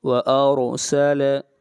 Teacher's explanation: را سے پہلے زبر آ رہی ہے، را کو موٹا پڑھیں گے